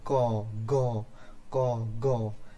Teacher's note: জিহ্বার পেছনের দিকটা আমাদের ওপরের যে উপরিভাগ রয়েছে তালুতে ঠেকে যায়, যেমন ক, গ, ক, গ। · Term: ভেলার